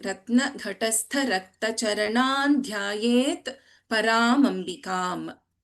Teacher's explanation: We have Anuswara followed by Dha. So there is the fifth letter of Tavarga replacing the Anuswara.